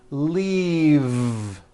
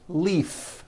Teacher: leave is very different from the word Leaf like from a tree which has an unvoiced F